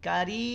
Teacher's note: kita pegang juga enggak getar enggak ada getaran di sana enggak bergetar